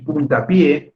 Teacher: la palabra punta ya deja de ser mono filo y puntapié cuál es la sílaba tónica sigue siendo pues la última puntapié como la sílaba tónica es la última es una palabra aguda